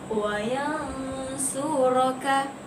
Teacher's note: Jadi cara bacaannya juga sama, iaitu kita sembunyikan, ikhfakan huruf nun di sini dan kita idghamkan, kita masukkan huruf nun itu ke dalam, kita masukkan sebutan bunyi nun itu ke dalam huruf sad. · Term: ikhfa hakiki